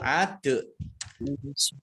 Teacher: Dal sukun kolkolah dibaca memantul